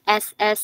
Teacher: S itu ujung lidahnya ditaruh ke gigi seri paling bawah tapi ke gusinya. S S S es biasa aja.